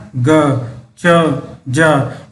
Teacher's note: इनको बोलने में, इनका उच्चारण करने में कम हवा निकलती है। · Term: अल्पप्राण